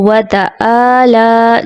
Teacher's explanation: عین کی جگہ حمزہ کی ادائیگی آ جاتی ہے